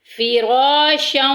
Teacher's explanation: را کو پر بھی ادا کریں گے، موٹا پڑھیں گے کیونکہ اس کے اوپر زبر آ گئی ہے